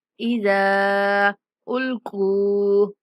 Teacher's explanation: ज़ाल को नरमी के साथ पढ़ते हुए 3 सेकंड तक लंबा करेंगे।